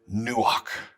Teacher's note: that ch on the end is kind of breathy back of the throat sound